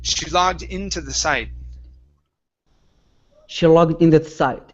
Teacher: connect the d to the word in